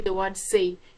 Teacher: you notice your lips widen but they do not go around so that is what we mean by unrounded okay compare when